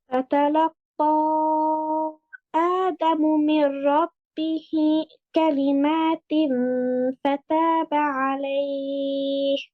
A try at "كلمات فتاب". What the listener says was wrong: এই কালিমাত, এই গুণটা দেখেন তানউইনের পরে ফা আসছে, তাহলে আমরা যে বলেছিলাম যে গুণনা মাখরাজ থেকে হবে, তাহলে কালিমাতিন উপরের দাঁত নিচের ঠোঁটে একদম লাগবে লাগবে ভাব। এই যে হাই হাওয়াজ যেটা, হ্যাঁ, এটা আরো ক্লিয়ারলি আরো ক্লিয়ারলি আপনার, আমার কাছে মনে হচ্ছে আপনার এটা হায়ের সাথে হাই হরফের সাথে মিলে যায় একটা।